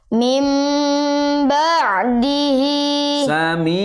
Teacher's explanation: membacanya dengung yang lama dengung yang lama dengan cara merapatkan bibir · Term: iqlab